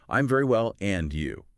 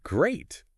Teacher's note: you've got to make sure that your voice goes up at the end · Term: rising intonation